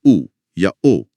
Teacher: आपकी जीभ का पिछला हिस्सा सिकुड़कर पीछे की तरफ जाएगा। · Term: पश्च स्वर